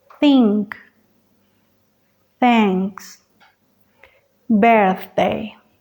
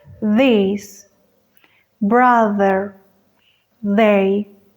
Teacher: la única diferencia entre ellos es la vibración de las cuerdas vocales